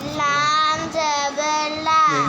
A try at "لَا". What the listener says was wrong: یہ لام کے ساتھ آگے الف بھی پڑھو. لام زبر الف لا. ملاؤ.